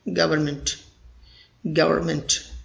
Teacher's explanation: You have to make N silent or fade it.